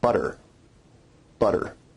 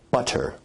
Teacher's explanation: your tongue is producing a tap sound there rather than a full stop or plosive sound